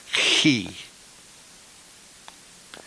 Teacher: The chi can also be pronounced further back in the mouth, back in the throat, more like a chi.